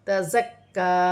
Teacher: کاف مشدد ہے، باریک کاف ہے، اسے جمع اور سختی کے ساتھ پڑھا جائے گا · نون ساکن کے بعد حرف اخفا میں سے تا ہے تو یہاں نون ساکن میں اخفا ہوگا